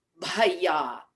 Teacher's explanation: that's one of those mahaprana beginnings that we use, and we utilize our abdomen to help.